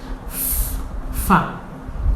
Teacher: So when you were saying the letter F, the sound of F, you had a lot of wind coming out with force.